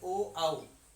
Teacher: ये बोले जाते हैं कंठ और ओष्ठ से, कंठ और ओष्ठ से